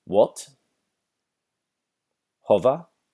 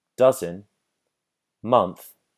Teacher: So the lot vowel, once again, is going to be our farthest vowel. It's a vowel pronounced at the very bottom of our mouths, whereas dozen and month are going to be more towards the center.